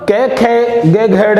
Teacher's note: कै वर्ग कंठ से उच्चारित होने के कारण इन्हें कंठय वर्ण भी कहा गया है।